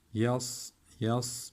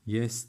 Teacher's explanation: Y ince bir harf. Sat harfimiz kalın harf. Yes demiyoruz. Yes dersek sin olur.